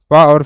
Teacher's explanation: प वर्ग में का प और फ अघोष वर्ण है